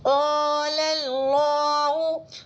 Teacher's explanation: اللہ کے لام سے پہلے لام پر زبر ہے تو اللہ کے لام کو پر پڑھیں گے